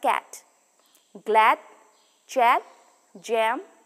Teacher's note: the vowel air the tongue is low down in the mouth the front of the tongue is not quite as low as possible but very slightly raised in the direction of the heart palette the lips are neutral · The tip of the tongue touches the lower teeth. The vowel may be defined shortly as front, unrounded, vowel, open but slightly raised. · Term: A sound